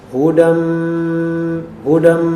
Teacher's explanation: pelafalannya makhrajnya di kisyum kisyum itu adalah bagian atas hidung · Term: idgham dengan adanya gunah, idgham bi gunnah